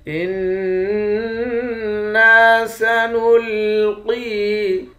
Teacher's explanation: نون مشدد پر غنہ کریں گے، نون کے بعد الف ہے، الف حروف مدہ ہے، حروف مدہ کو 1 الف کے مقدار کھینچ کر پڑھتے ہیں۔